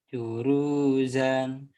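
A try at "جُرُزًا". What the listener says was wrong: Jurusannya salah. Jurusan, nggak ada yang panjang. Jurusan.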